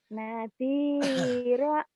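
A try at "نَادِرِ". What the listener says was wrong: salah Bu barisnya di bawah Ibu. Nadiri.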